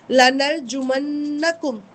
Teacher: یہ نون پہ جب تشدید آتی ہے نا اس پہ غنہ آتا ہے ، نون مشدد کا غنہ کہتے ہیں اس کو، اس کے